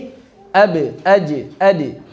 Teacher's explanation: pantulannya menjadi tarqiq pada huruf ba, jim, dan dal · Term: pantulan tarqiq